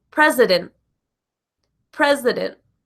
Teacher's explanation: the vowel I, like in president, is also the schwa sound